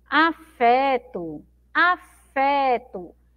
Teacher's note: A sílaba mais forte é o fé, né?